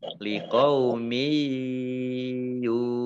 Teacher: yaknya dibaca mendengung karena tasdid, ya, ditahan 2 harokat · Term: idgham bi gunnah